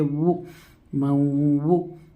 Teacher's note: واو کے اوپر پیش ہے، پیش والے حرف کو معروف پڑھے، جلدی پڑھے، پیش کی آواز آگے کو جاتی ہے اور ہونٹ گول ہوتے ہیں، جیسے وہ مو۔